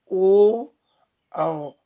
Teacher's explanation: कंठोष्ठ मतलब जहां पर कंठ और ओष्ठ दोनों का प्रयोग होता है, तो वो है ओ, औ।